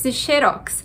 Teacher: para dizer xerox a gente precisa colocar o acento na primeira sílaba sem o acento E você vai ficar xerox